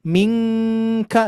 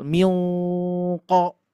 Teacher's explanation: Kalau huruf kaf tipis, mingka, tapi huruf qaf tebal, milko. Nah, jadi tebal tuh, enggak sama, enggak jadi mingko gitu ya untuk aturannya.